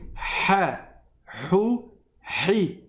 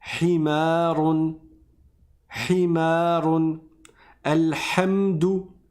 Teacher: C'est au milieu de la gorge et on laisse frotter. Donc on va resserrer et on va frotter.